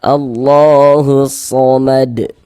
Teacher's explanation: Alif lam syamsiyah atau idgham syamsiyah. Karena cara baca huruf lamnya dibaca idgham.